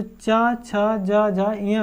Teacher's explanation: तो इससे पता चलता हमारी जो चा, छा, जा, झा, इया है ये हमारी तालु वर्ग की, यानी तालु को छूकर जीभ आती है, तब ये बोले जाते हैं